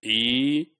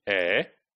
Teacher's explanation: within E sound, the tongue is very close to your roof of the mouth, your palate, right? But in the case of A, the sound which is taking place in cat, right? So that sound is taking your tongue open, right? And it is like away from your roof of the mouth. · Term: height of the tongue